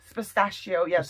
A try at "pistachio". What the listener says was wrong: Pistachio. pistachio. You're putting the S in the wrong place. Pistachio.